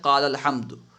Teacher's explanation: قال الحمد میں دیکھیے الف پڑھنے میں نہیں آ رہا ہے · حرف مد کے بعد اگر سکون دوسرے کلمے میں ہو تو حرف مد گر جائے گا، اسے یعنی پڑھنے میں نہیں آئے گا